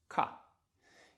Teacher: So at the very back, when the back of the tongue hits that soft palate back there, we get ka